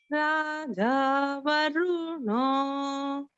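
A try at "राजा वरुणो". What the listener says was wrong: Swaras are very good. Just watch out in Varuno, Ru is Hrasva. And because this is not Rig Veda, this is Yajurveda, we don't elongate that Ru or emphasize it.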